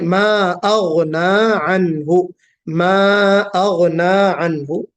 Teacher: गैन को पुर निकालना है, अपने दुरुस्त मखरज से निकालना है, हलक से